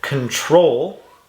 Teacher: i can also see it ends with a consonant okay control the stress is on the end